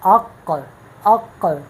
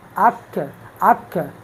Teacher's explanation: قاف کے مخرج سے منہ کی طرف آگے بڑھ کے پھر کاف ادا ہوتا ہے